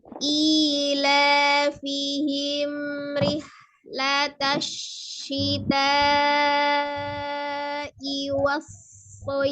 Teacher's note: Ketika masuk di sod sukun, sod sukun dan sod fathah ya, tasdid itu sod sukun, maka kembalikan, sempurnakan bentuk makhrajnya. Makhraj huruf sod adalah ujung lidahnya di antara ujung gigi seri atas dan bawah ya